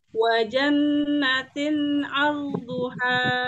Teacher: Tahan lagi nunnya di gunnah mutawwalah ya, dipanjangkan.